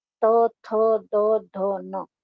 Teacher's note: अब हमारी जीभ है ऊपर वाले दांतों से टकराती है, तो ये दंत्य वर्ण कहे जाएंगे